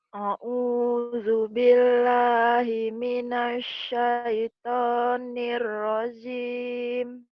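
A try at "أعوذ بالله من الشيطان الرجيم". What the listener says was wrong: Jimnya keras. Nirrajim. Nirrajim. Jangan ragu.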